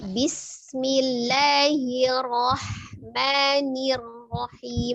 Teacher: Hati-hati di huruf ro-nya takrirnya cuma sekali aja, tidak hir, bukan hirrahman, tapi ketika dia hir maka dia tipis ya. Jadi ro sukun sebelumnya dia kasroh maka dia tipis. Hirnya tipis, kemudian rohnya baru tebal.